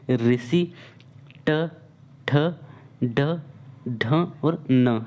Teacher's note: जब इनका उच्चारण हम करते हैं सो जीभ जो होता है यानी कि जीभ की जो नोक होती है साथियों, उलटकर मूर्धा को स्पर्श करती है और वे मूर्धन्य व्यंजन कहलाते हैं।